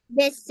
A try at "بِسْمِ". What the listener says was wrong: پھر وہی بات، بس میں بس کیا ہوتا ہے، بس نہیں کرنا. سین کو ہلنے نہیں دو اپنے پوزیشن سے. بسم اللہ الرحمن الرحیم.